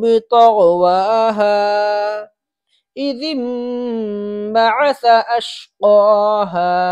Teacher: اذ انبعث پہ سا ہے تو سا بالکل واضح نکلنا چاہیے، جو مخرج زال کا ہے وہی سا کا ہے